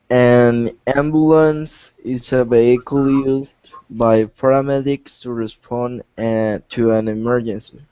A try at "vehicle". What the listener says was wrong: Okay, now this word right here, instead of vehicle, in English we actually stress the first syllable, so we say vehicle.